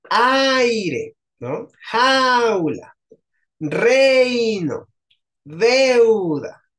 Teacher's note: hay una vocal abierta tónica con una vocal cerrada átona. Se siguen pegando de cualquier manera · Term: diptongación